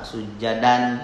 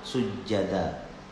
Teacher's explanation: Sama sujadan kalau baca, tapi kalau diwakafkan sujada.